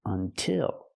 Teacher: The stress is on the second syllable, so we use the I sound like this is, until.